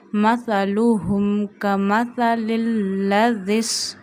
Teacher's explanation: Don't stretch zama on lam and ha. And read this ha from the last part of your throat